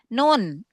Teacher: ujung lidah ketemu dengan gusi di atasnya gitu ya. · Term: huruf nun